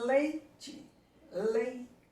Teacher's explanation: O I quase que some, o E é muito mais presente. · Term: decrescente